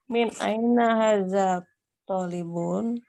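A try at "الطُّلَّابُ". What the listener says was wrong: Tolibu. Ada alnya. Tolibu.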